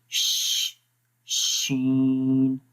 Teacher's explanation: शीन में थोड़ी सी स्पेस है जहाँ से हवा निकलती है, खारिज होती है, ठीक है। इस वजह से शीन की आवाज़ सही पड़ी जाती है और मुंह के अंदर क्या हो जाती है, स्प्रेड, फैल जाती है मुंह के अंदर ये इसकी आवाज़।